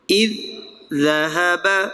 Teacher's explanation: پہلا زال جو ہے وہ ساکن ہے، پیش نہیں ہے، دوسرے زال کے ساتھ اس کو ملائیں گے. اذ ذهب، دو زال آ گئے نا تو پھر وہ ادغام مثلین ہوا.